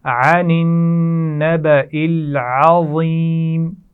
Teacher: عین کا مخرج واضح کیجئے، عین حلق کے درمیان سے ادا کیا جاتا ہے